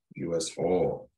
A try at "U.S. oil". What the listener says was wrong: All. Almost sound like you're saying all. U.S. all.